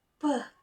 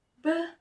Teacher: P and B different voicing, where P is voiceless and B is voiced. Both are produced at the bilabial place of articulation by closing both lips.